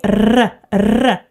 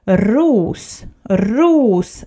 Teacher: we need to have a vibration between your tongue and your gum.